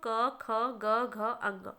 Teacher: ये टोटल पांच होते हैं और यह पांचों क्या है कंठ से बोला जाता है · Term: कंठस्थ